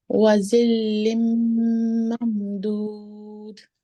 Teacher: वाव साकिन हो, उससे पहले हर्फ पे पेश हो, तो वो वाव जी मद्दा होती है, उसको 2 सेकंड के लिए खींच के अदा किया जाता है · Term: वाव मद्दा